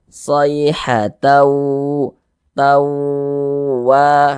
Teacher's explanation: Nah, tidak, tapi dibaca sayhatau karena dia bunyi tanwinnya dia masuk melebur ke huruf waw begitu. Kemudian digunnahkan, didengungkan, sehingganya di bagian taunya itu kita panjangkan sejenak. Sayhatau, tawa, kita tahan, kita panjangkan sejenak sepanjang 2 harokat. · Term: idgham bi gunnah